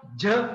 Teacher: च मध्ये ह मिसळला छ, ज मध्ये ह मिसळला झ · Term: महाप्राण